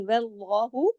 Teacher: صرف اللہ کے اسم جلالہ کرتے ہوئے نام میں لام کو موٹا کریں گے اور ہا کو زیادہ کھینچیں گے نہیں